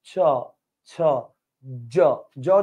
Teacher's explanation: উপরে বাতাসটা তালুতে ব্লক করে রাখে। ব্লক করে তারপর ধুম করে বেরে যায়।